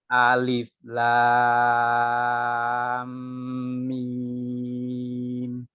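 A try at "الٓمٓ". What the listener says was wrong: Sedikit lagi anunya. Apa namanya? Gunnahnya. Alif lam mim.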